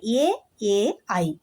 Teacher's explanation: ಗಂಟಲಿನ ಸಹಾಯದಿಂದ ಮತ್ತು ದವಡೆಯ ಸಹಾಯದಿಂದ ಉಚ್ಚಾರಣೆ ಮಾಡುವಂತಹ ಅಕ್ಷರಗಳನ್ನ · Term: ಕಂಠ ತಾಲವ್ಯ ಅಕ್ಷರಗಳು